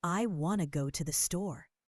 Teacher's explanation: The rhythm is short, long, short, long.